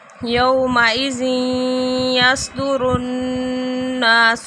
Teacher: یہاں پہ تنوین کے بعد یا آ گیا تو ادغام ہو رہا ہے، غنّے کے ساتھ ادغام ہے